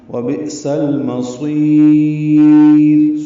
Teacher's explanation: سین کو لام سے ملائیں گے، اظہار قمری ہے، میم جلدی ادا کریں گے، صاد پر پڑھیں گے، صاد کو لمبا کریں گے وقفاً، مد عارض سکون بنا کے را کو باریک پڑھیں گے وقفاً. وبئس المصیر، صاد پر ہوگا اور را باریک ہوگی.